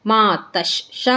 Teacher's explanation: ವಿಸರ್ಗದ ಮುಂದೆ ಶಿದೆ ಅದಕ್ಕೆ ನಮಗೆ ಅರ್ಧಶ ಆಗುತ್ತೆ